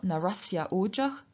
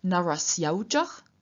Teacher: with the a and o changing or merging into au, and the two words therefore being written together. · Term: sandhi